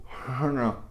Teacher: E o nasal cerebral, que é o hna. A língua toca no céu da boca também. Então você tem o hna A gente não tem isso, tá, gente?